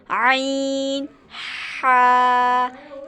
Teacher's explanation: ये हलक के दरमियानी हिस्से से अदा होते हैं, वस्ते हलक से।